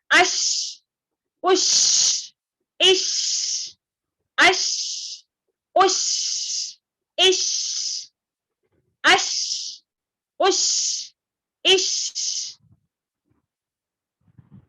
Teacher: درمیانی زبان کو درمیانی تالو سے لگا کر باریک آواز سے پڑھا جاتا ہے